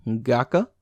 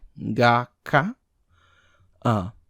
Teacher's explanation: the speaker stops and waits for one beat before pronouncing the sound